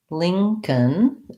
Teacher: The lin is actually like this, ling with the NG sound. And then this C-O-L-N just sounds like a K and an N, Lincoln.